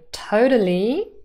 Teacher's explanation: there's always this rise at the end.